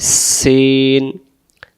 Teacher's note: সিন অক্ষর সামনের নিচের দাঁতের আগা থেকে শীষ দিয়ে পড়তে হয়